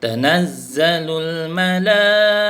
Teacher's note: Yang ini mad wajib muttasil. Mad wajib muttasil baca 5 tak boleh kurang.